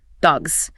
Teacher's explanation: A word like dogs that ends in a voiced G sound gets a buzz.